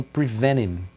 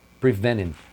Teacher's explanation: O prevent é muito comum em várias palavras que tem o final nt, às vezes nem tá no final, tá até no meio da palavra. Esse nt é muito comum eles não pronunciarem o t. Você ouve ela falando prevenim.